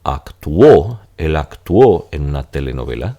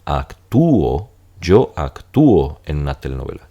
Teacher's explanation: serán tres sílabas porque la u y la o se van a separar